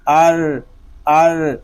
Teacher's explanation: ایک حرکت کی طرح اس کو تکرار کریں گے، تھوڑا سا رکیں گے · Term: مشدد